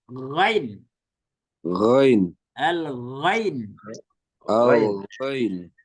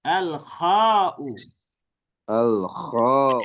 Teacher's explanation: Kalau ghain itu di bawah, kalau kha lebih ke atas.